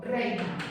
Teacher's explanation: tengo una vocal fuerte más una vocal débil en una sola sílaba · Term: diptongo